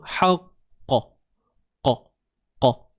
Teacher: Kena berbalik pada makhraj qaf lah. Pangkal lidah. Sebab tu bunyi dia tinggi ke belakang tu.